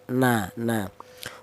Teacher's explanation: huruf nun keluarnya huruf berasal dari ujul lidah menyentuh langit-langit mulut